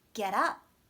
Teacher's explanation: there's more stress on up